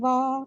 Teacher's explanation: واؤ پہ فتح ہے، اس کو بھی ہم راؤنڈ کرتے ہوئے 1 کاؤنٹ پڑھیں گے